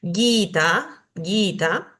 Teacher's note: tiene dos vocales largas tanto la i como la a son largas Por ende tengo que hacer que esos sonidos duren un poquito